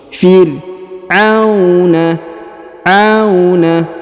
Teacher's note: huruf a diayun atau dipanjangkan dua harakat karena di depannya terdapat wau sukun